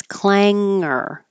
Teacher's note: the tongue goes back up on the top of the roof of the mouth and then slides back so that you don't hear the G otherwise it'd be clang but it's clang hanger and it's not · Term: NG combination